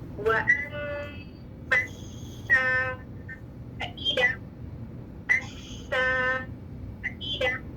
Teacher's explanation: سین مشدد، 2 سین clear کرنے سفیر یا سیٹی کے ساتھ. ٹھیک ہے، تو اس کو جلدی سے نہیں پڑھ سکتے، 2 سین کی سیٹی کلیئر کرنی.